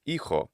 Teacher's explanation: at some point there was some kind of h sound that the word began with which became silent